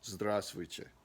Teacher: The first V is silent, and then that last T is actually kind of soft.